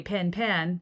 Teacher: So when I merge pin and pen and say pin, the same way, that's an accent difference.